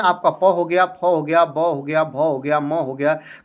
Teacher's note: आपको इसको उच्चारण करने में आपके दोनों ओठ सटते हैं या दोनों ओठ के प्रयोग से ही इनका उच्चारण आप कर पाते हैं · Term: ओष्ठ व्यंजन